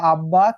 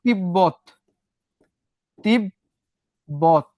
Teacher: যদি বর সঙ্গে ব ফলা যুক্ত হয়, দুটিরই উচ্চারণ হয়।